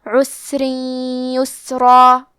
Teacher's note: آخری میں را کے نیچے تنوین زیر ہے، پھر حرف الیا آتا ہے کلمت یسرا، یا حروف الادغام بغنہ میں سے ہے تو ہم یہ حکم کو غنہ اور تشدید کے ساتھ ادا کریں گے